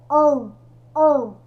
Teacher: É um som, né, nasal. Nós chamamos de som nasal esse an. Por que nasal, professora? Porque é um som que sai pelo nariz